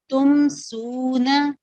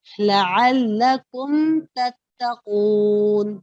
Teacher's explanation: مکمل ہونٹ مل رہے اور کسی قسم کا کوئی بھی غنہ آپ نے نہیں کرنا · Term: اظہار شفوی